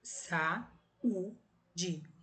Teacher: são duas vogais, sendo cada uma em uma sílaba diferente.